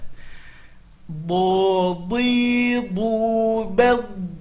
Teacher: Makhrajnya adalah tepi lidah ke gigi geraham atas. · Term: huruf do